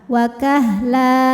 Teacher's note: Mad iwad sebab ada harakat tanwin fathah yang diberhentikan cara bacanya dipanjangkan dua harakat wakahla tanpa n kemudian di ujung nya ada tanda wakaf Jaiz